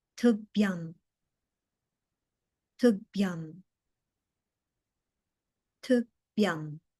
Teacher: That H after the B in the final word is aspirated, so we want to give it a little extra oomph.